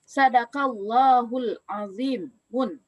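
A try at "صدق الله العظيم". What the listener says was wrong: Jangan azimun, kan pantang. Ya, pantang pakai apa? Pakai tanwin. Bisa dibaca sadaqallahul azim. Orang sudah membaca Quran kan sering sadaqallahul azim.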